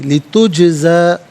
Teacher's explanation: جیم ساکن ہے لیکن یہاں پر ناظرین حرف قلقلہ ہے تو آواز لوٹتی بھی محسوس ہونی چاہیے